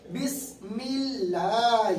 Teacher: اللہ کے لام سے پہلے زیر ہے تو اللہ کے لام کو باریک ادا کریے